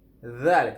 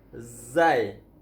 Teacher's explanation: Dia zal hujung lidah, lidah terkeluar. Zal. Kalau allazi kalau zai lidah tak terkeluar.